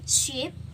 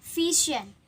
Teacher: Sh is a voiceless, and j is a voiced. Sh example sheep and j is vision.